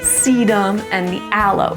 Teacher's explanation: Even if they have 2 syllables, we're just going to put the emphasis on the first one.